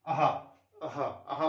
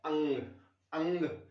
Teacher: ठीक है, अहा, अहा, अहा मतलब जैसे बोलेंगे अहा तो हवा ज्यादा निकल रही है, अंग बोलेंगे तो हवा कम निकल रही